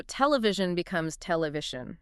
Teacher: The stress moves to the second-to-last syllable.